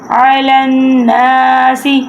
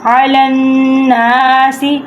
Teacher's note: اب لام نون کے ساتھ اٹیچ ہو رہا، نون کے اوپر ہے تشدید، تو اس لیے ہم نے ادھر گننا کرنا ہے، ناک میں سے آواز نکالنی ہے